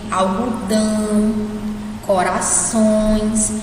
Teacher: você sente que faz um pouco pelo nariz